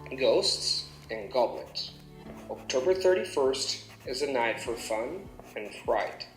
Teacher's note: then the sentence falls on fright because I have concluded saying the sentence itself